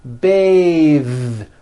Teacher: when you change it into a verb, to bathe, the vowel changes to an A sound and the TH is voiced.